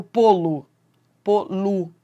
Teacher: O lô vira lu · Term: átono